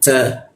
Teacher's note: Huruf ta menggunakan ujung lidah tempelkan ke gigi